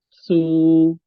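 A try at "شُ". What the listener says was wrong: Bukan su tapi shu. Shu.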